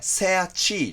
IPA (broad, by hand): seəʧiː